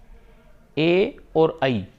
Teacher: यानी इनका उच्चारण ए और आई का उच्चारण कंठ और तालु से होता है